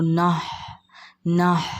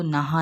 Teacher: انما، نہ، اب یہاں پر ہم کو دھیان دینا ہے کہیں ہاں پر زبر نہ لگ جائے، بلکہ یہاں ہاں کیا ہے؟ ساکن ہے، تو نہ، نہ بولنا ہے اس کو، نہا نہیں